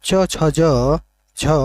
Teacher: ये स्पर्श संघर्षी व्यंजन है